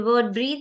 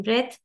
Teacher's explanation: breathe you have e there that's why it is voiced but in breath it is unvoiced